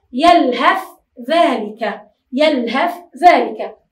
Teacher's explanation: نتجاهل حرف الثاء أو لا نتجاهله، وإنما ندخله إدخالا كاملا في حرف الذال